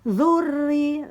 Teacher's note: ronya bertasydid ditekan, dzurri, nah yanya bertasydid juga ditekan lagi